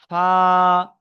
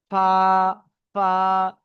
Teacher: নিচের ঠোটের ভিজে অংশ নিচের এটা এবং সামনের উপরে উপরের দুই দাঁতের আগার সাথে লাগিয়ে উচ্চারিত হয় ফা তাহলে এই দাঁত এই দাঁতের আগার সাথে লাগে ফা ফা